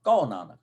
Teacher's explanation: ਹਾਹੇ ਨੂੰ ਔਂਕੜ ਦੀ ਬਜਾਏ ਪਿਛਲੇ ਅੱਖਰ ਤੇ ਕਨੌੜਾ ਬੁੱਲੇਗਾ, ਆ ਦੀ ਮਾਤਰਾ, ਤੇ ਹਾਹਾ ਹਲਕਾ ਜਿਹਾ ਬੁੱਲੇਗਾ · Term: ਹਲਕਾ ਜਿਹਾ ਹਾਹਾ